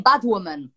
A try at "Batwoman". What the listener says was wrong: But it's not bad woman. It's bat. Woman.